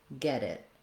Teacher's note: the linked final T, when it links to a vowel sound, turns into a flap, sounds more like a D